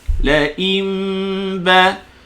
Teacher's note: nun sakinah bertemu ba, iqlab. Jadi dapatkan kedua bibir, pertemukan antara dua bibir. La imba secara ringan, jangan ketat.